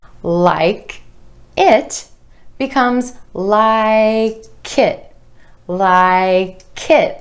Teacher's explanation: that final K sound linking over in front of the I in it.